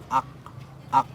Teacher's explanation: Kalau huruf kaf itu dia cuma berupa percikan saja. Jadi keluarnya sedikit.